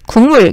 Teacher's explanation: 기역이 비음인 이응으로 바뀌었으니까 비음화. 뒤에말 때문에 앞에인 기역이 이응으로 바뀌었으니까 역행.